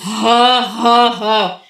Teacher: اور ہا کو ہم نیچے سینے کی جانب سے ادا کریں گے، جیسے ہم تھکی ہوئی ہا کی مانی، ہا ہا ہا وہ والی.